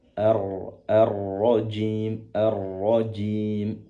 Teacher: Cukup mengangkat pangkal lidah ke atas sehingga ro itu sudah tertunaikan sifat tebalnya.